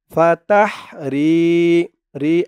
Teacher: রি একালিফ টান, জেরের পরে ইয়া সাকিন